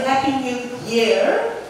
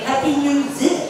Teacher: It does seem to be quite common more in the north that sometimes Y sounds like Z.